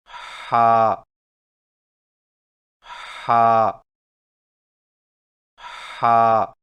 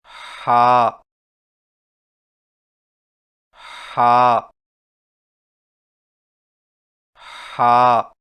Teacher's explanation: ہا کی ادائیگی میں زبان کی جڑ کو حلق کی طرف مضبوطی سے دباتے ہوئے باریک اور رگڑ کھاتی سانس میں پڑھیں